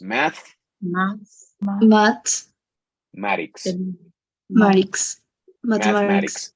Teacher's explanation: Math, o sea, hasta casi con la lengua entre los dientes.